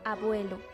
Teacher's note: A, cerrada cuando está en sílaba libre